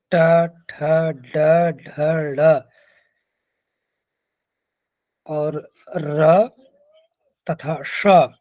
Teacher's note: ट, ठ, ड, ढ, ड़ और र तथा श, इनका उच्चारण स्थान मूर्धा होता है।